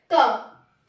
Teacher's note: जब हम बोलेंगे तो हम पाएंगे कि स्वर तंत्रियों में कंपन नहीं हो रहा है। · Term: कंपन नहीं हुआ